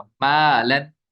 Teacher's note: الف سے پہلے میم ہے یہ باریک حرف ہے، الف بھی باریک ہو جائے گا